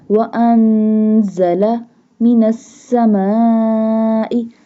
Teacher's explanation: Seen pronounced like a whistle sound.